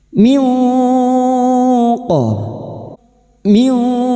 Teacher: Nun sukun atau tanwin yang bertemu dengan salah satu dari 15 huruf ini termasuk huruf qaf. Maka bunyi nun sukun kita baca samar dan mendengung selama 3 harokat